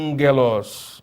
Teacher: esse primeiro gama, né, ele vai nasalar